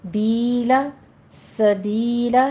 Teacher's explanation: یا مدہ 2 کاؤنٹ کریں گے